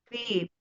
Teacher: Nah, kan V-nya kan hurufnya kan bibir ya, huruf bibir kalau fa ya. Fa huruf bibir kan? Bertemunya bibir bawah dengan gigi seri atas ya.